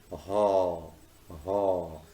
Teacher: This sound is usually described as a voiceless glottal. The glottis is the space between the vocal folds in the larynx.